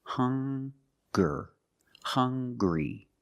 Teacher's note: They also make the same sound with the nasal sound and the hard g.